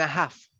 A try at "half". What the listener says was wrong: No, no, we don't pronounce the L, half.